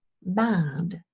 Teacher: the quality of the ash is different in the word bad it's longer and a little bit wavy